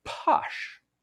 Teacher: you might have a longer delay between when the uh lips are released and when your vocal cords start vibrating · And so when you say that, what you're doing is you're really delaying, you're really exaggerating that delay between when the lips part and the vocal cords start vibrating